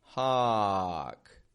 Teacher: My lips are neutral. I'm not bringing my lips in towards the middle.